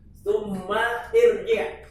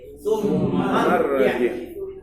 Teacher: Karena hamzahnya wasol. Hamzah wasol, hamzah yang selalu disambung dengan huruf sebelumnya, kata sebelumnya menjadi tidak nampak. Summa irji' menjadi summarji'.